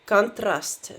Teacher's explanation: the emphasis is clearly on the ah vowel